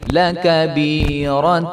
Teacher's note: یا مدہ ہے تو اس کو ایک الف کے برابر لمبا کریں گے